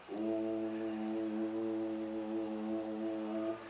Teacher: we breathe in and coming back we make a sound o keeping the lips puckered and making that ooh sound